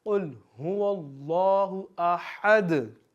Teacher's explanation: अब दाल पे भी हमने अपनी आवाज़ को लौटाना है क्योंकि ये कलकला है